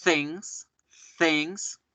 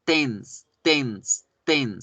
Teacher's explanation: Fíjense cómo la lengua pasa de la punta de los dientes a atrás de los dientes, tocando el alveolo, la parte superior de la boca.